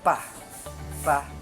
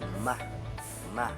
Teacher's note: ang panlabi ay paraan ng pagbibigkas na kung saan dumidikit ang ibabang labi sa labi itaas